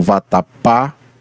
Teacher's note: Vatapá é uma palavra oxítona porque ela possui a sílaba tônica na última sílaba · o pá é a sílaba mais estressada, mais dita com mais força